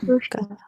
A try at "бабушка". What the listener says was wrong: It's going to be stress on first part. Бабушка. Бабушка. Бабушка.